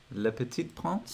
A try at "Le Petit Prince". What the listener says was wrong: I don't think you said the T. So the last T. So you said Le Petit. Le Petit Prince.